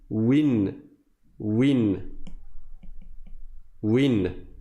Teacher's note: c'est comme s'il y avait un noun avec un soukoun après, sauf qu'on ne l'écrit pas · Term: tanwin